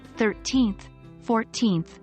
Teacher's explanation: we use ordinal numbers like 13th 14th 15th Etc and the stress usually falls on the second syllable